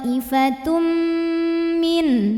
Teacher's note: idgham bhunah karena ada tanwin dhamah ketemu sama huruf mim maka tanwinnya masuk ke mim thoifatum bunyi m dan dengungkan bunyi m-nya tahan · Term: idgham bi gunnah